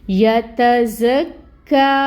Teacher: زا میں صفیر ہوگی، صفیر لے کے آئیں، اور اس کے اوپر یہ جو فتحہ کی حرکت ہے 1 کاؤنٹ ادائیگی ہوگی اس کی۔ کاف کے اوپر آپ دیکھیں تشدید ہے، ٹائم ٹیکنگ ہوگا، اور یہ جو کھڑی مد ہے 2 حرکت لمبا اس کو کھینچیں گے